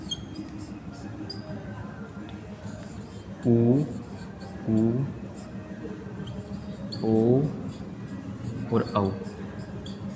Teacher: पश्च स्वर जो पिछले भाग से बोले जाते हैं